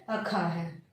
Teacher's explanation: ख क्या है, स्पर्श व्यंजन भी है, कंठ ध्वनि भी है, अघोष ध्वनि भी है, और साथ ही क्या है महाप्राण ध्वनि भी है